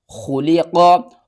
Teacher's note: خا کو آپ نے پر کر کے پڑھنا ہے، حلق کے سب سے اوپر والے حصے سے ادا کرنا ہے